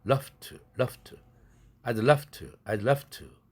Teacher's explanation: 뒤에 있는 to의 무성음에 영향을 받아서 앞에 v라는 유성음에게 너도 떨지 마 이렇게 나 닮아 이렇게 요구하는 것이죠. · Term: 동화